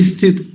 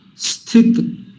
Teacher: जैसा पिछली कक्षा में एक बार चर्चा हुई थी, स्थित, मेरा ध्यान से सुनिए, ई की आवाज नहीं आएगी मेरी